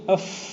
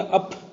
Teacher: پے ہے مل کر جو پ عجمی زبان میں اردو میں ہے یہ تو خالص دونوں ہونٹوں سے ادا ہوتی ہے۔ یہ عربی فا ہے، یہ دونوں ہونٹوں سے نہیں ادا ہوتی، ایک ہی ہونٹ